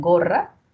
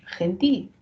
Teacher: el fonema que tendría valor podría ser el oclusivo en gorra o el fricativo en gentil